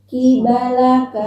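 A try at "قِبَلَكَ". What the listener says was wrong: Bukan ki. Ya, jelas. Qibalaka.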